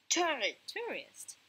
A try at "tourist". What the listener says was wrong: Again, tourist. Okay, there is an S here. Tourist. Tourist.